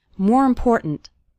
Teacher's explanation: The word more kind of runs into the word important, and the last syllable of important kind of gets reduced. We don't say important.